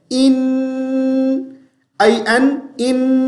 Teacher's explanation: اے کی آواز جیسی آواز نہیں نکالنی بلکہ ای جیسی آواز نکالنی ہے